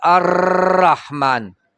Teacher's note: के او د دې را د ادا کولو په دوران کې په مخرج کې د ژبه دونه نرمۍ سره ولګې چې د را یو را په ځای څلور راګانې ویل شي لکه الرحمن دې ته تقریر حقیقي وایي لا حکم په مره